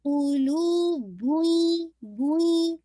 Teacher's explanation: آپ نے دمہ کو واضح کیا اور پھر نیزل ساؤنڈ ادا، کیونکہ ہر لیٹر کی ہم حرکت کو پورا ادا کریں گے جو اس پہ حرکہ ہے.